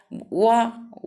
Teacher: दंतोष्ठ, माने दांत और ओंठों का प्रयोग होता है वा का उच्चारण स्थान।